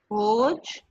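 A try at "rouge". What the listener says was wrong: इसको य क्यों बोलते हो? This is ज. जैसे ज बोलते हैं, उसके नीचे डॉट लगा दो तो वो ज साउंड करता है ना.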